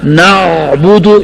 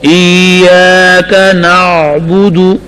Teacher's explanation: عین کو درمیان حلق میں پڑھیں. غلطی کیا ہوتی ہے کہ عین کو زور دینا اور گلا گھونٹنا.